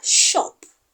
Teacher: A voiceless post-alveolar fricative sound.